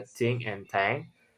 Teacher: Place of articulation in the dental. Tongue. The tongue touch the teeth. So manner of articulation is fricative.